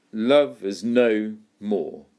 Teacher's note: Two stresses, two syllables that are stressed together. We call that a spondai or a spondaic stress. · Hear how no more are both stressed syllables.